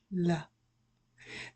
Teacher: It does not touch your bottom teeth. So, move into a light l sound.